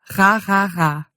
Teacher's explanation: When all goes well when producing this consonant, your uvula, that thing that hangs down at the back of your throat, will vibrate against your tongue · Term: uvular R